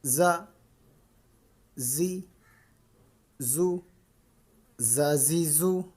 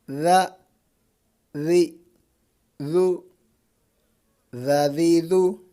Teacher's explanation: اس میں زا کی آواز نہیں آنی چاہیے، یعنی سیٹی کی آواز نہیں آنی چاہیے اس میں، اس کو نرمی سے پڑھنا ہے۔